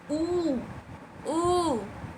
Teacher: अब देखेंगे आप वृतमुखी, तो ऊ को बोल के देखिए, ऊ ऊ बोल के देखिए, मुख आपका गोल सा बन जाएगा तो उसे वृतमुखी